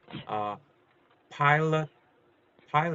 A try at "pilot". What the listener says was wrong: Add the T sound at the end. Pilot.